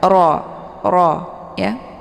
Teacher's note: Wara, ini ra karena harakatnya fathah, maka hukum bacaan ra ini adalah tafkhim, jadi dibaca tebal dengan posisi ujung lidah terangkat ke langit